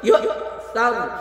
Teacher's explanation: یا کے بعد حمزہ ساکن ہے، یہاں پہ تھوڑا سا جھٹکا لگائیں گے